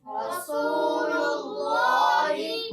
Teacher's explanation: اللہ عز و جل کے لام سے پہلے حرف پر پیش ہے, اس لیے اللہ عز و جل کے لام کو پر پڑھیں